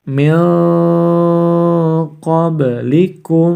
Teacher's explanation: nun sukun harus dibaca samar-samar sebanyak 2-3 harokat karena bertemu dengan salah satu huruf qaf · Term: bacaan Ikhfa